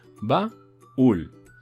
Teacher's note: Porque decimos baúl, le damos la fuerza de voz a una vocal débil. Al darle la fuerza de voz a una vocal débil como es la U, se convierte automáticamente en fuerte y se separan y sería ba-ul.